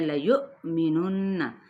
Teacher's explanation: آیۃ لیؤمنن، آیۃ، یہاں پہ ادغام بلا غنہ کا قاعدہ ہے، یو پہ حمزہ ساکن ہو جائے گا، حمزہ ساکنہ پہ ہم نے کیا ہے، جھٹکا دینا ہے ، لیؤمنن، نون پہ غنہ کرتے ہوئے حرکت کو کھینچیں گے